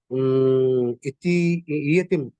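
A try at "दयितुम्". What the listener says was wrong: Dayitum. Dayitum. Da, E no, da only. Dayitum. E will have a hook below.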